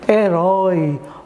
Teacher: Olha aí o oi aí você pronuncia com timbre aberto Então nesse caso aí ele é um ditongo aberto Ok gente